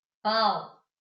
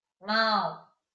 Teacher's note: Gente, saiu pelo nariz